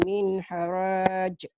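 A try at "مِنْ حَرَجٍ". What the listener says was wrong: Pendek. Enggak ada dua tambah satu. Enggak ada matobinya. Min haraj. Iya, min haraj.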